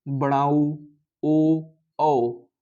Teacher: आप बोलते समय मुंह का अपना आकार देखिएगा, ऊ बोलिए, बड़ाऊ, ओ, औ, ये सब बोलते समय आपका मुंह गोल आकृति बन रहा होगा, तो इसलिए इसे वृत्ताकार स्वर कहते हैं।